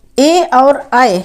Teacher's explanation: जब ए और आए बोलते हैं तो कंठ को भी छूता है और नीचे वाले तालु को भी टच करता है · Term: कंठ तालब